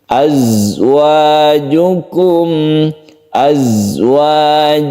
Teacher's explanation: Azwajukum, kemudian di sini kadang-kadang kita mendengar orang yang membaca za itu dipantulkan azwajukum, padahal dia itu tidak memantul. Dia itu bersifat shafir yang berdesir. Azwajukum, azwajukum, jadi tidak memantul karena dia bukan qalqalah.